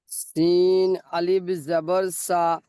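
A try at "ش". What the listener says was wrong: সিন নয়, ওটা শিন। তিনটে নোক্তা আছে দেখেন।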